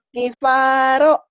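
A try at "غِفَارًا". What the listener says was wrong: Bagus. Gifaro tuh ya, sedikit aja udah pinter.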